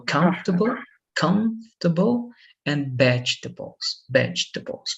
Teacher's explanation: in the two cases the vowels in the middle disappear but the stress is in the first part